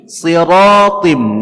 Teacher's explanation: si nya tebal, ra nya tebal, ta nya juga tebal